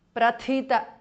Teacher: the Thi is Mahapranah